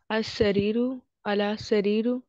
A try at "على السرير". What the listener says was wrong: اس میں بھی لام کو سین کے ساتھ جوڑنا ہے. على السرير،